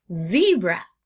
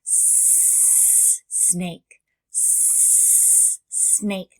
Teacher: you have the sound on for that zebra and our sound off for our snake